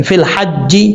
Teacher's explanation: فا کو جب لام سے ملائیں گے بیچ میں یا اور الف کو چھوڑ دیں گے